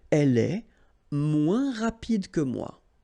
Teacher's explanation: And then, moins, same thing here. Remember, we don't pronounce the final S